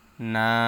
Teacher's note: জবরের বাম পাশে খালি আলিফ মদের হরফ এক আলিফ টা নিয়ে পড়তে হবে